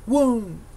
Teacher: 単独で発音すると「ウン」と最後ちょっと気持ち下がる感じですよね。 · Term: 第三声調